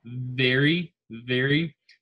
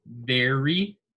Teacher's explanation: the V is kind of like the F, where you use your teeth on your lip to pronounce the V